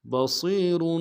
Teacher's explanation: با کو سے ادا کریں گے. صاد کی سیٹی موٹی ہوگی. صاد کو یا کے ساتھ ملانا ہے.